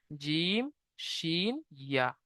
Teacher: এই 3টে অক্ষরের মাখরাজ জিভের মাঝখান আর সেই বরাবর উপরের তালুর সাথে লাগিয়ে উচ্চারিত হয় জিম, শিন, ইয়া।